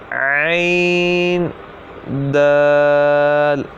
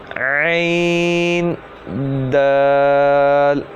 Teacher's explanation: عین بھی ح کی طرح حلق کے درمیان والے حصے سے ادا ہوگا